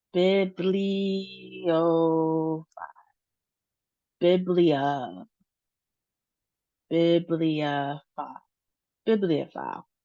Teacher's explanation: The emphasis is on the first syllable as well as toward the end of the word.